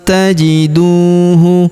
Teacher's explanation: Li anfusikum min khairin tajiduhu. Huruf du kita panjangkan 2 harokat karena wawu sukun di depannya